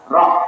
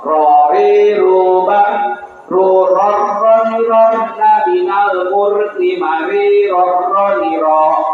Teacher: karena dia sifatnya bergetar, tikror, maka dia bergetar ke bawah, ke atas, dua kali gerakan